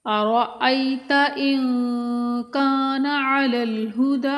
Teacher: نون ساکن کے بعد حروف حلقی میں سے کوئی حرف نہیں ہے، حروف اخفا میں سے ہے، تو یہاں پر اخفا کریں گے، ناک میں آواز کو چھپا کر 1 الف کے برابر رک کر پڑھیں گے